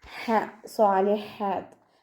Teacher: ഹ തൊണ്ടയുടെ മധ്യഭാഗത്തു നിന്നാണ് വരുന്നത്, സൗണ്ടിനെ വ്യക്തമാക്കി കൊടുക്കുക.